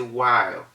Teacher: the wh assumed the sound of just the w